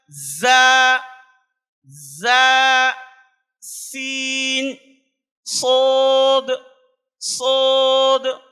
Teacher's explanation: زا، سین، صاد کا مخرج ہے زبان کی نوک اور سامنے کے دانتوں کا سرا، تو طلبہ سے کہنا ہے کہ زبان وہاں پر لگائیں گے لیکن زبان باہر نہیں آئے گی۔ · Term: سیٹی کی آواز